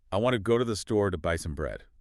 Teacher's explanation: In that sentence, the main stress falls on want, go, store, buy bread.